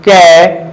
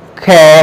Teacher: जैसे मैं अपनी हथेली को उल्टा करके कहूं कै ख, जब मैंने कै वर्ड बोला तो वायु मुख से कम या अल्प निकलती है। जिस तरह मैंने ख वर्ड का उच्चारण किया तो मुख से वायु महा यानी अधिक निकलती है। इस प्रकार इसको हम महाप्राण और अल्प प्राण में विभक्त करते हैं।